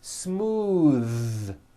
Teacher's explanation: Believe it or not, the TH sound in smooth is voiced.